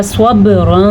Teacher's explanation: سواد کو پھر سے پر پڑھا اور با پہ قلقلہ کیا